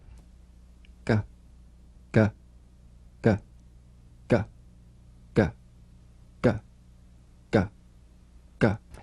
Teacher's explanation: the back of the mouth without tightening pressing or pushing duh you'll feel a crisp tap and a voiced pulsation of the back of the tongue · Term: voiced tongue back plosive consonant